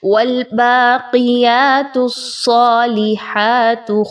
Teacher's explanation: والباقیات الصالحات، اب تا کو صاد کے ساتھ جب ملائیں گے تو تا ایک باریک حرف ہے، جبکہ صاد ایک موٹا حرف ہے۔ تا اور صاد کو ملاتے ہوئے سیٹی کی آواز صاد میں آئے گی، جبکہ صاد خوب موٹی پڑھی جائے گی اور مضبوطی کے ساتھ ملایا جائے گا۔